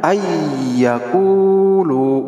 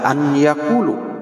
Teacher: Maka dibacanya ayyakulu, tidak dibaca an yakulu, tetapi dibacanya ay, seolah-olah nunnya itu hilang, itu nunnya melebur masuk ke iya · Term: idgham bigunnah